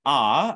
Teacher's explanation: the sort of bright ah is open front and unrounded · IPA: /a/